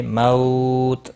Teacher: واو لین ہے، تھوڑا نرمی کے ساتھ کھینچ کر ادا